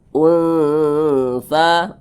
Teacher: didengungkan itu suaranya itu kita tahan, kita panjangkan